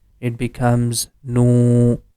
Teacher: In this example, the first syllable here, letter waw becomes mud letter because it's coming after dhamma, and we have to make the nu sound for 2 count because of waw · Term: natural long sound